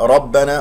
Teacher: الراء مفخمة والباء شديدة مجهورة